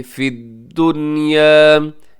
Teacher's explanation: यहाँ दुनिया नून साकिन है और नून साकिन के बाद या है, यरमलून का है, लेकिन यहाँ पे हम इदगाम नहीं करते। 4 अल्फाज ऐसे हैं कुरान पाक में जहाँ नून साकिन के बाद यरमलून में से कुछ आ भी जाए तो हम इदगाम नहीं करते बल्कि हम इजहार करते हैं।